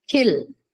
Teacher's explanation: superscript in the paper so that H actually represents aspiration okay so kill is aspirated skill is not aspirated